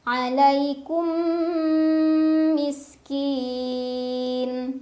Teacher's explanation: Alaikum, ada idgham mimi karena ada mim sukun yang bertemu dengan huruf mim. Dibacanya mim pertama dileburkan atau dimasukkan ke mim kedua sambil nahan dulu, dengung dulu. Alaikum miskin.